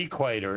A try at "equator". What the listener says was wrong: What is with your weird-ass pronunciation? It's the equator. You put the emphasis on the wrong syllable. It's weird. The equator, not the equator.